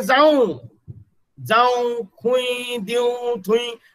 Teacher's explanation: आता पळया, उतराच्या शेवटाक 2 स्वर एकठांय येतात आणि तांचो आवाज नाकियो जाता तेन्ना एम निमाणे बरयतात. इफ at the end of the word a diphthong comes and its pronunciation is nasal, then write M at the end of the word.